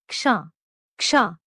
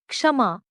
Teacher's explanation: this is a combination of simple consonants क plus श plus the इंप्लसिट vowel sound अ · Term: कंपाउंड कंसोनेंट